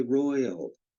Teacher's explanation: we say Royal with the Y pronounced like a vowel or semi vowel and we even sometimes pronounce y so weakly or muted that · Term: semi-vocalic I